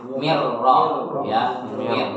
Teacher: Jadi di ro-nya itu ada sedikit getaran ya